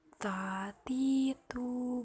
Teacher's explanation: menyentuh ujung lidah dengan gusi gigi seri bagian atas dengan mengalirkan sedikit nafas